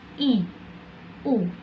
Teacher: vokal tinggi, vokal yang dibentuk dengan menempatkan posisi lidah di atas